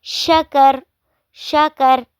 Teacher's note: شاکارا پہ را پہ زبر ہے، لیکن جب ہم اس کو وقف کریں گے تو پڑھیں گے شکر